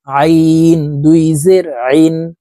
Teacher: আইন হরফকে হালুকের মধ্যখান থেকে চাপ দিয়ে পড়তে হবে